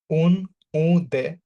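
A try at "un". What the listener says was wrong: না, প্রথমটা আ, আমরা জানি ইউ এন মিলে, মানে ভাওয়েল প্লাস এন সাউন্ড আছে, মনে আছে? ইউ এন মিলে আ হয় এবং আই এন মিলেও আ হয়। তো এখানে ইউ এন মিলে আ, উচ্চারণটা আ।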